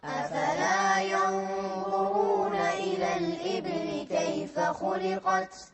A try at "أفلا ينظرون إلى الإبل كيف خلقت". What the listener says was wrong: مو الإبل، الإيبي، الباء مكسورة. أفلا ينظرون إلى الإبل كيف خلقت.